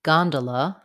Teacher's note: The first, gondola, has first syllable stress. Letter O says vowel ah, gone. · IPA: /ˈgɑndələ/